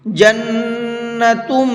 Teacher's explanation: اس نون کے اندر بھی غنہ کریں گے اس لیے کہ نون کے اوپر تشدید ہے، اور یہاں میم کے اندر بھی غنہ کریں گے اس لیے کہ میم کے اوپر بھی تشدید ہے، اور جب نون اور میم پر تشدید ہوتی ہے تو پھر غنہ کر کے پڑھتے ہیں۔